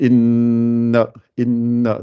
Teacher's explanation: c'est un son qui sort par le nez. Et je dois rester 2 temps, le temps de faire 2 lettres.